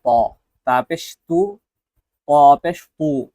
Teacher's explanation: এই তা, তাটা স্বাভাবিক হবে বা পাতলা হবে, তটা মোটা হবে